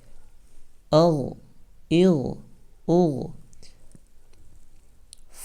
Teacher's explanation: حمزہ غین زبر اغ، غین. غین یہ حروف مستعلیہ میں سے ہے اس لیے ہم اس کو موٹا کر کے پڑھیں گے، اور حرف ساکن میں سے بھی ہے اس لیے یہ اپنے سے پہلے اکشر کے ساتھ مل کر صرف ایک مرتبہ پڑھا جائے گا.